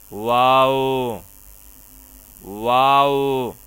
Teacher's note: دونوں ہونٹوں کو گول کر کے واو کو ادا کیا جائے گا